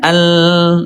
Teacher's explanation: mulai dari adnal hafah ujung sisi lidah. Nah, di sini ayah bunda ya sampai ke muntahal hafah ujung akhir sesilidah. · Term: huruf lam